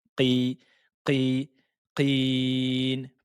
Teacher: Il, lettre Ain, kasra, I, lem, sukun, il, il, il, mel, mel, supprimez le hamza de liaison, passez directement sur la lettre lem, il, mel, ya, qin. La lettre qaf, attention, avec la kasra, on a dit qu'il fallait la prononcer de façon emphatique, toujours.